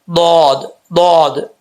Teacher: है ये left side ऊपर वाली लेफ्ट वाली जो दाढ़े हैं उन दाढ़ के साथ लगेगी जुबान की लेफ्ट साइड और जुबान ऊपर उठेगी तो ये दद पढ़ा जाएगा